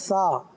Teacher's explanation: जबान की नोक ऊपर के दांतों के अंदरूनी किनारे, वो सिरा, जबान का सिरा ऊपर के दांतों के अंदरूनी किनारे पर लगेगी। यही सा का मखरज है, जबान का सिरा और ऊपर के दांतों के अंदरूनी किनारे।